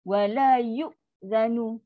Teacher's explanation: Hamzah tak boleh. Hamzah sifat identiti dia syiddah. Putus bunyi.